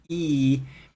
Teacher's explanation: or what you do with your tongue when you say e it kind of spreads your lips your tongue is in a forward position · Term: e sound